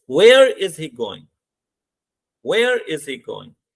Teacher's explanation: Going में हमारी टोन क्या होती है, डाउन होना शुरू हो जाती है. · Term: falling tone